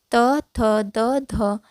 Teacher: त थ द ध यह चारों का उच्चारण स्थान दंत्य होगा